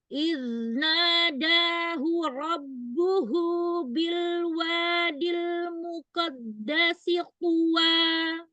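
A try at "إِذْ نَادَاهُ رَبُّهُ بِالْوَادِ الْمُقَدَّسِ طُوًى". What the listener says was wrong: Muqadda, ujung lidahnya kuatkan yang menekan pangkal gigi seri atasnya.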